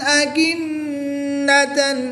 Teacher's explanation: یاد رہے کہ غنہ کی مقدار 1 الف یعنی 2 حرکات کے برابر ہے, اس سے زائد لمبا نہیں کریں گے